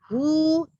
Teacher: dihimpun bistidaroh, dihimpun dua bibirnya bistidaroh. Hu dihimpun bibirnya. Kemudian pangkalnya agak sedikit naik. Itulah dhammah, ya. Pangkal naik itu tapi tengah lidah nggak cekung.